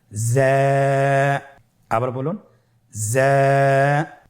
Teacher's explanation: জিহ্বার আগা সামনের নিচের 2 দাঁতের পেট ও আগার সঙ্গে লাগিয়ে উচ্চারিত হয়।